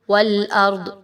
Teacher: را کو پر پڑھتے ہوئے وقف کریں گے